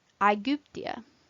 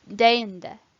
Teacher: Some combinations of vowels, however, are pronounced as one sound. These are called diphthongs, and they are always long in quantity. AE, Aegyptia.